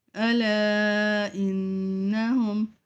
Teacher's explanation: الا کو 5 الف کی مقدار کھینچیں گے